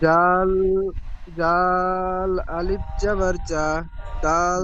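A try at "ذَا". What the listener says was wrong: এক আলিফ টান দিয়ে পড়তে হবে এখানে রিডিং পড়া উচ্চারণটি হয়নি টান হয়নি আরো বেশি করে টান দিয়ে বলতে হবে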